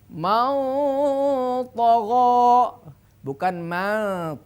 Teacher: jaga ketebalan huruf tho itu dengan menebalkan dengung daripada hukum ikhfa Hakiki